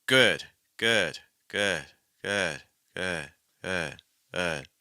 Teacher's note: at the end like we almost have like no G at all versus at the beginning we have a really heavy G